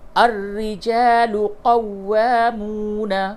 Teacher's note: یہ را مشدد ہے اور واو مشدد ہے، دونوں جگہ پہ تھوڑی سختی کے ساتھ بولیں گے